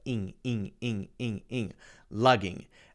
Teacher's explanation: It's actually the long E sound with the ing happening at the back of your throat.